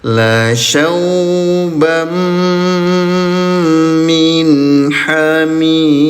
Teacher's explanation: hubungkan bunyi tanwin dengan huruf mim terlebih dahulu, lalu sengaukan bunyinya selama dua ketukan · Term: idgham bigunnah